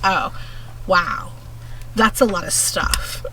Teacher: she had a really really major case of vocal fry